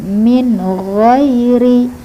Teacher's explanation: Kita lanjut, min ghairi, min jelas, ghairi, gha itu mengalir udaranya, gha bukan go tetapi gha lembut